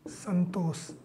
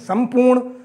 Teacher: अनुनासिक हो जाता है अर्थात पंचम वर्ण में बदल जाता है म उस वर्ग के अनुनासिक में चेंज हो जाता है